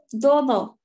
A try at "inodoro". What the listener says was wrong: Not dodo. No. Not a double D. Dodo. Ino. Inodoro.